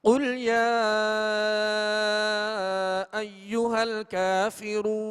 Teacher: قل شروع کا جو ہے وہ دو نقطے والا قاف ہے، یہ پر حرف ہے، اس کو پر پڑھیں گے، کل نہیں پڑھیں گے بلکہ قل موٹا پڑھیں گے. اور یا پر جو مد ہے اس کو دراز کریں گے، کھینچیں گے · اور یا پر جو مد ہے اس کو دراز کریں گے، کھینچیں گے. کافرون کا کاف ڈنڈی والا جو اس کو باریک پڑھیں گے